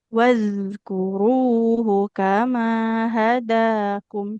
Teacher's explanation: huruf zalnya harus lebih ngalir lagi suaranya